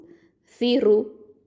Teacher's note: ச அப்படிங்கிறது வந்து தரஃபுல் லிசான், நாவு நுனி நாவு மேல் பற்களுக்கு கீழே வச்சு சொல்லணும்.